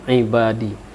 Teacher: ain itu agak sedikit di hidung, ibadi. Kalau dibaca ibadi seolah sebunyi alif lain makna, maka makharijul hurufnya tidak tepat.